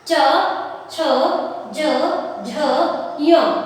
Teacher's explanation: तालव्य का मतलब है मुंह की भीतर की छत का पिछला भाग, जो आपकी पिछला भाग है, जीभ किसको टच करेगी, छत का पिछले वाले भाग को।